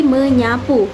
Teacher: Nah, jika bertemu dengan me, huruf S itu akan luluh dan disenyawakan dengan fonem ny sehingga menjadi menyapu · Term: peluluhan fonem